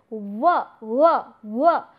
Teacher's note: the lower lip is coming in contact with the front teeth and resulting in the production of this sound